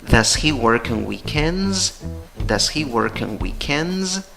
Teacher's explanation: Pregunta con entonación para arriba.